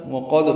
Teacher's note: وقد واو ہونٹوں کی نا تمام گلائی سے، قاف پر دال ساکن پہ قلقل ہے